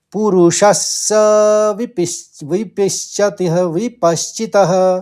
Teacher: श के ऊपर आघात है तो स का 2 बार उच्चारण करना पड़ेगा आपको, और प के ऊपर आघात है तो पहले श का उच्चारण होगा, फिर च का होगा